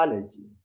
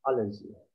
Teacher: the stress is in the A